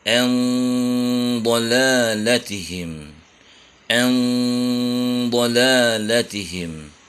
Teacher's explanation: Kita membaca ikhfanya menebal, andolalatihim, andolalatihim. Bunyi n-nya bersiap di huruf dha, yaitu tepi-tepi lidah sudah bersiap menyentuh gigi geraham atas. Tentunya dengan suara yang ditebalkan, yaitu dengan mengangkat pangkal lidah, karena huruf dhad adalah huruf isti'la, yaitu huruf yang bunyinya tebal. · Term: ikhfa menebal